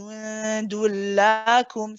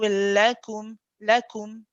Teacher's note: not too long on the lam. So you don't want the lam to stand out.